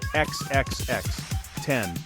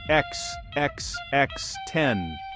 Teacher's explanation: The rhythm is key. Three quick X, then a strong 10.